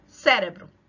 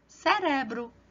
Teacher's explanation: A sílaba tônica está aqui na primeira sílaba. Mas em espanhol não vai estar na primeira sílaba, vai estar na segunda. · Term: heterotônico